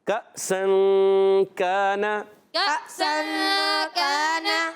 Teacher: جب کبھی نون ساکن تنوین کے بعد حروف اخفا میں سے کوئی حرف آتا ہے تو اخفا ہوتا ہے، یعنی غنہ کر کے پڑھتے ہیں، ناک میں آواز کو لے جاتے ہیں اور نون کو چھپا کے ادا کرتے ہیں